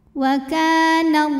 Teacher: cara bacanya dipanjangkan lamnya dua harakat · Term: thi'i muqaddar